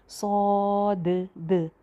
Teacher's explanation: तो इसी तरह इसको मोटा करके और भरा हुआ मुंह करके सौद। और लास्ट पे जो दाल की आवाज़ आ रही है वो बाउंसी साउंड होनी चाहिए